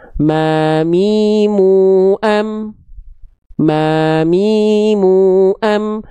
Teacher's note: Cukup sentuhkan bibir atas, bibir bawah, beres. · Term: huruf mim